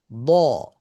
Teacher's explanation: আমাদের পুরো ঠোট গোল হচ্ছে না। ঠিক। তবে কিছুটা হালকা গোল ভাব রয়ে গিয়েছে। কেন? মূল কারণ হচ্ছে যে এই হারফটার মানে তার সাউন্ডটার কারণে।